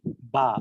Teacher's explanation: ঠোঁটের ভেজা জায়গা থেকে উচ্চারিত হচ্ছে বা।